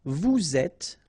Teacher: little liaison to between the two and then final S not pronounced.